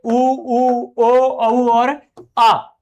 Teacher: इनको उच्चारित करते वक्त हमारी जीभ है वो पिछले भाग पे टच होती है। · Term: पच